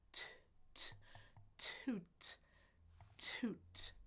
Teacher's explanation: back forward on the ridge on the bump and explode it but no voicing